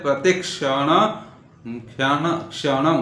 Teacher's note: क और सकार मिल करके क्ष बनता है